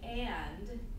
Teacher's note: if I say and by itself, you hear it in its full form, and it's very easy to hear the vowel